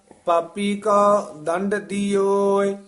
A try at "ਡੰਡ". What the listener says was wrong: ਦੰਡ ਨਹੀਂ, ਡੰਡ, ਡੱਡੇ ਹੀ ਦੋਵੇਂ ਹਨ। ਪਾਪੀ ਕੋ ਕੋ ਡੰਡ ਦਿਓਏ।